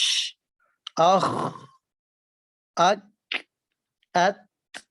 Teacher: آواز بہت زور کے ساتھ نہیں ٹھہرتی بلکہ انتہائی پستی کے ساتھ اور کمزوری کے ساتھ ٹھہرتی ہے اور سانس آپ کا جاری رہتا ہے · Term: ہمس